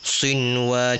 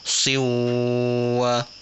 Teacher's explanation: Bacaan dia tak jadi idgham walaupun nun mati bertemu waw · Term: izhar